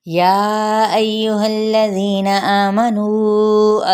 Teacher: یہاں پہ یا کو ہم 4 حرکت لمبا کریں گے، حمزہ کی زبر کو یا کے ساتھ ملائیں گے، اس کی ضمہ کو یعنی پیش کو لمبا نہیں کریں گے، ہا کی زبر کو لام کے ساتھ ملاتے ہوئے لام کی حرکت کو لمبا نہیں کرنا۔